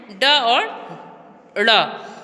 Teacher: उच्छिप्त व्यंजन क्या है कि इन वर्णों के उच्चारण में जिह्वा के अग्रभाग उलटकर झटके से खुलता है।